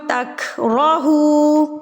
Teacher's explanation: را کے اوپر زبر ہے تو را پر پڑھا جائے گا. واو ساکن سے پہلے اگر پیش آ جائے گی تو یہاں پر ہا کے اوپر پیش ہے اور ہا کے بعد جو واو ساکن ہے، اگر پیش کے بعد واو ساکن آ جائے تو یہ واو مدہ کہلایا جاتا ہے.